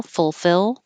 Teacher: We don't have to say the first L